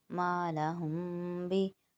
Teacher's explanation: جب دونوں ہونٹوں کو آپس میں ملائیں گے تو حرف میم ادا ہوتا ہے، تو اسی طرح میم کا غنہ بھی ہونٹوں سے شروع ہوگا اور ہلکی سی آواز ناک میں جائے گی